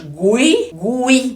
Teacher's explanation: mais forte mais forte é o i porque eu falo Gui esse U aqui eu falei o sonzinho mais exprimido mais fraco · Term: semivogal